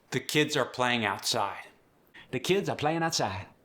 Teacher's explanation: The melody rises at the end. Friendly, musical.